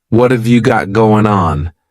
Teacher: what and have are going to be pushed together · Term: reduction or a contraction